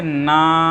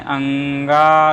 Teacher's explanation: उच्चारण करते समय हमें नाक और मुख की दोनों की सहायता लेनी पड़ती है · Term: पंचम वर्ण